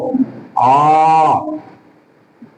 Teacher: ये जो तीन की आकृति, इसका अर्थ होता है ह्रस्व स्वर की अपेक्षा इसमें तिगुना समय लगता है। ये तीन एक संकेत होता है, कहीं कहीं पर आपको ये छोटे रूप में भी मिल जाएगा, जिससे ऐसे लिखा हुआ भी मिलेगा, तो ये प्लुत स्वर कहलाएगा।